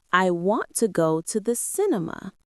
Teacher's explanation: The strong words are want and cinema. The other words are softer and faster. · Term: sentence stress